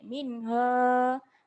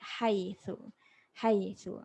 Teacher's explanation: ha simpul ni berat sikit. Minha, kemudian ha pedas ada angin sikit